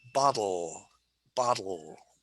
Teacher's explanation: let's talk about this word bottle bottle or all the tip of my tongue is on the alveolar ridge